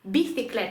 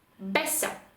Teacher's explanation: після певних також літер де просто артикуляційно нам легше так вимовляти вони будуть вимовлятися просто як звук Б звичайний наш б можливо трішки з більшим таким придиханням